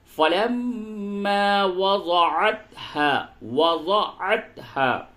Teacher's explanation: میم مشدد ہے، اس جگہ پہ غنہ ہوگا